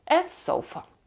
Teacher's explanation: два слова в нас є е артикль соofфа е диван воно так швидко вимовляється так близько вимовляється одне до одного що ми сприймаємо його як одне слово